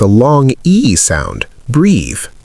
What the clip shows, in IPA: briːð